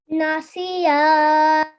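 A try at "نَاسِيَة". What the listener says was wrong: Well done. Very nicely read.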